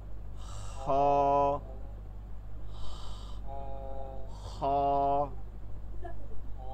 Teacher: এখানে হলকের শেষ থেকে তালুতে গিয়ে ঘষা খাবে, তালুতে গিয়ে বের হওয়ার সময় ঘষা খায়। খ না, বাংলা খ না, এর থেকে নরম হয়, উচ্চারণের মধ্যে ঘষা খায়।